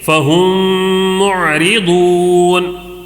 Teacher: میم ساکن کے بعد میم آیا ہے تو ادغام شفوی. اوکے غنّے کے ساتھ پڑھیں گے. دوسرا قاعدہ کیا ہے؟